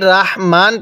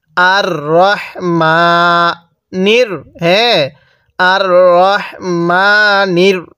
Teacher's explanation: রটা একটু পোর করে পড়ব। আর রহমানির রহিম, অনেকেই রাহিম পড়ি।